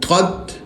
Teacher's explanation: تو کو تا سے ملائیں گے، طت، تو موٹا تا باریک، طت کُشِطَت۔